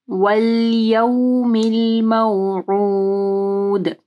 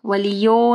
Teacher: واو ساکن سے پہلے یا کے اوپر زبر ہے، مدلین آ رہی ہے، ٹھیک ہے۔ یا ساکن اور واو ساکن دونوں جو ہے مدلین کے حروف ہیں، ٹھیک ہے۔